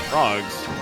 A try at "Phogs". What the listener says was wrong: It's Fogs, no R.